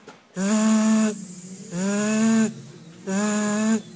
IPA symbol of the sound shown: z